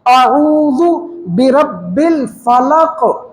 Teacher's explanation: یعنی حلق کے درمیان سے عین اور ہا، یہ دونوں یہاں سے نکلیں گے